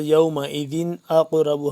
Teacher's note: دال کو تنوین ہے لیکن یہاں پہ غنہ یا اخفا نہیں کریں گے، وجہ یہ ہے کہ آگے الف ہے اور جو حروف ہلکی کا ہے.